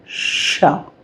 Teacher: ये तालव्य व्यंजन होता है। यानी कि तालु से बोला जाता है।